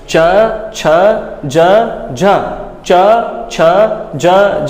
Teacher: हमारे जो चै वर्ग के वर्ण हैं, उनका उच्चारण स्थान कहाँ से है, तालु से